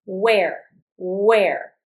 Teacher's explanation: when I pronounce where, I really don't pronounce the H